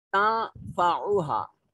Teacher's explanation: نون ساکن ہے اور اس کے بعد فا حروف اخفا میں سے ہے، نون کو اپنے مخرج میں چھپا کر پڑھیں گے